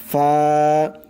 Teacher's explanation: নিচের ঠোঁটের যে পেট আছে মধ্যখান, ঠোঁটের মধ্যখান, উপরের দুই দাঁতের মাথা সেই মধ্যখানে লাগবে